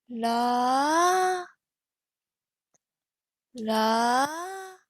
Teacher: it starts in the middle with our neutral voice then we rise up to the high pitch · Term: rising tone